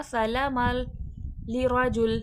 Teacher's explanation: तनवीन के बाद लाम आ रहा है, इदगाम बिला गुन्ना होगा।